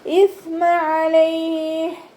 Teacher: സ മഖ്റജ് വരുന്നത് നമ്മുടെ മേലെ മുൻപല്ലിൻ്റെ അറ്റവും നാവിൻ്റെ അറ്റവും ചേർന്നിട്ടാണ്. നാവിൻ്റെ കുറച്ച് ഭാഗം പുറത്തോട്ട് കാണുന്ന രൂപത്തിൽ വെക്കുകയും ചെയ്യുക, അതോടൊപ്പം തന്നെ കുറച്ച് എയർ പാസ് ചെയ്യണ സൗണ്ട് കൊടുക്കുകയും ചെയ്യുക കേട്ടോ.